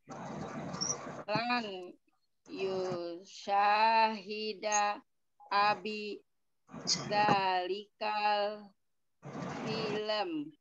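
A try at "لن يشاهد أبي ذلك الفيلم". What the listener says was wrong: Ini ujungnya jangan dibiarkan mingkem, Bu. Film mingkem begitu, harus ada bunyinya. Kalau memang dia sukun ya silakan.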